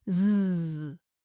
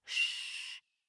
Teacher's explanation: Put your fingers gently against your throat and say zzz. Feel the vibrations? Now try it with a sustained shh. There are no vibrations. So we can make the sound softly and continuously.